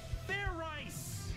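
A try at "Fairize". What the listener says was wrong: Do it again, and this time make sure you pronounce the Z.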